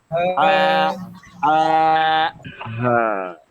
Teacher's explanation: হা অক্ষরের উচ্চারণটা হবে একেবারে আমাদের গলার ভেতর থেকে এইভাবে আ, আ, হ্যাঁ আ।